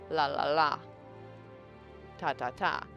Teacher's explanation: My tongue sides kind of pull in a little more and my tongue becomes more like a tube or a log like and air is allowed to flow along the sides of my tongue. La ta da and it changes the shape of that tube again changes the way the air is coming out and changes the sound. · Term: lateral sounds